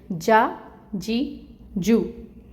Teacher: वस्तुल लिसान बिलमुकाबिल तालु से जाकर मिल जाती है, चिपक जाती है तो जीम अदा होता है